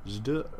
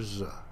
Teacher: Early on it was pronounced zd, later on z. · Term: zeta